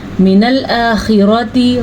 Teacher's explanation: रॉ को पुर पढ़ना है क्योंकि रॉ पे ज़बर है